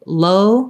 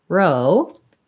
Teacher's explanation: So if I'm saying low versus row, the front lifts for the low, low, and the back lifts for the row